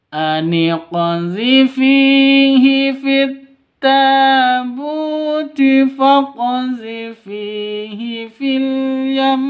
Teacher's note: Terus yam itu ditahan sampai 2 ketukan karena waqaf gunnah musyaddadah ya.